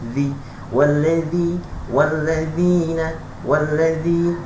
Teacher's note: zal ni mesti nipis hujung lidah